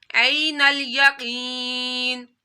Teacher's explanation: یا ساکن سے پہلے زیر آ رہی ہے تو یا مدہ کرنا ہے. قاف حروف مستعلیہ میں سے قاف کو موٹا پڑھنا ہے